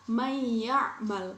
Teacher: nun mati bertemu dengan huruf ya. Jadi huruf ya-nya dibaca seperti bertasydid. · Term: idgham bi gunnah